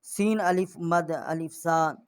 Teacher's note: یہاں ہم نے یہ اس کو 4 الف جتنا جو ہے آواز بلند کی ہے، بڑی مد ہے